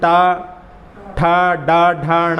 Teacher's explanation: हाँ, शाह जो षटकोण वाला है उसका उच्चारण करने के लिए अपनी जिह्वा को, जहाँ से अपन टा ठा डा ढा णा का उच्चारण करते हैं, वहीं से शा का उच्चारण होता है